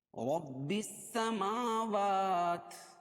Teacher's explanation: رب السماوات، میم پر کھڑا زبر، واو پر کھڑا زبر، کھڑا زبر قائم مقام الف مدہ کی دونوں کو ایک الف کے برابر کھینچ کر پڑھیں گے